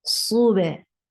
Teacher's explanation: You close the makhraj first of ba and then you open it. That opening is called qalqala.